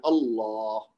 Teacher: تو ہم نے اب تک کیا سمجھا ہے کہ اگر اللہ کا اپنا نام صرف لیا جائے تو وہ تو چونکہ حمزہ کے اوپر زبر ہوتا ہے تو ہم نے اس کو موٹا پڑھنا ہے